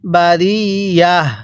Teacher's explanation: ওয়াকফের সময় এই যে একটি গোলতা দেখতেছেন, এই তাটিকে হা বানিয়ে পড়তে হবে।